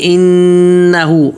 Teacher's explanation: واستغفر آگے انہو نون پہ تشدید ہے وہ نہ کریں گے انہو ہو پہ ایک الف کے برابر کھینچیں